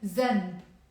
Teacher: But in the Lebanese accent, we pronounce it as a z, zen. Okay?